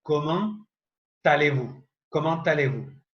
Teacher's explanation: Observen esta palabra, comment. Comment termina en T. Por lo general, esa T de comment yo no la pronuncio. Pero aquí voy a pronunciarla haciendo una ligadura con la palabra que le sigue